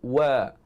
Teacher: Huruf waw maksudnya kita kena muncungkan bibir mulut. Makhrajnya adalah di antara dua bibir mulut.